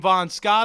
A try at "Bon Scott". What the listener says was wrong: Bon Scott, not Von. Okay, sound like a V.